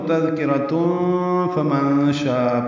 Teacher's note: تذکرہ ملانا ہو تو تذکرۃ فمن شاء پڑھیں گے. تنوین کے بعد فا آنے کی وجہ سے اخفا ہوگا. اسی طرح نون ساکن کے بعد شین آنے کی وجہ سے بھی اخفا ہوگا.